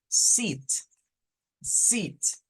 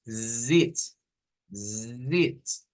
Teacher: no es lo mismo decir sit, sit, a decir zit, zit. Porque aquí hacemos la vibración, zit, sit, zit.